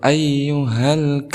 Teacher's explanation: Di sini alif lam dibaca jelas, maka kita hukumi sebagai al-qamariyah. Kenapa? Karena ada huruf alif lam bertemu dengan salah satu huruf al-qamariyah yaitu kaf.